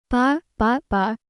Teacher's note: The sound is just like the B in boy. To say it, you just close your lips and then gently pop them open with a soft little bus sound. It's not a big explosion of air.